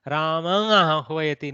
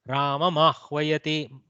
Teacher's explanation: your mouth just cannot bring out the anuswara there. It has to bring the makara. · Full lip closure, makara, then ah.